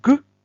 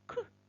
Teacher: останній звук Ґ це дзвінкий а глухий к